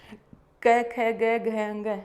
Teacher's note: कंठ से बोलने वाले वर्ण, क वर्ग के सारे वर्ण क, ख, ग, घ, अंग हम कंठ से उच्चारण करते हैं।